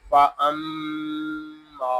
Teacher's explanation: میم شدد میں ہمیشہ غنہ ہوتا ہے اور غننے کی مقدار 1 الف تک ہوگی۔ غننے کا معنی ناک میں آواز لے جانا ہے۔